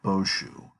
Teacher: it's actually pronounced Boshu, with the accent on the first syllable here.